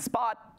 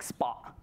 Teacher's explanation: it's complete closure, right? You don't breathe out. You might even turn it into a glottal stop, like spa, right?